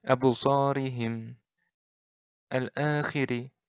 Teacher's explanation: Ri-nya ini pendek. Ri-nya ini tipis. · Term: ro' tarkik